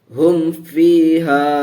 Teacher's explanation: گنہ نہیں ہوگا، ظاہر کر کے میم کو پڑھیں گے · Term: اظہار شفوی